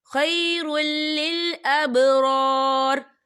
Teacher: یا دیکھیے خیر را کے اوپر تنوین ہے، تنوین کے بعد جو ہے لام آ رہا ہے، اور لام جو ہے حروف یرملون میں سے ہے، تو یہاں پر ادغام ہوگا اور ہم اسے بنا غننے کے پڑھیں گے